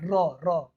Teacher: र वर्ण का उच्चारण कहाँ से होता है, र र मूर्धन्य, मूर्धरा से होता है